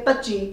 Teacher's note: malwa dialect is kind of a flat it's not tonal as the other dialect of the punjabi language